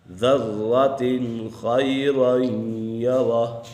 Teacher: ذال کو ذال ہی پڑھا جائے گا، اکثر طور پر اسی حروف میں ذال کو زا پڑھ کے چلا جاتے ہیں، یہ غلط ہے